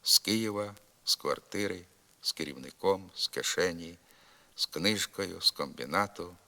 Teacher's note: вимовляємо на місці прийменника з глухий с